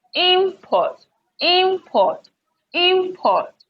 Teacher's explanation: you have a word like this imports import import import okay this is the noun so the stress falls on the first syllable